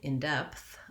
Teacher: in the phrase in depth i want to have my stress on the word depth uh the in is unstressed and unimportant in my sentence so if i look at something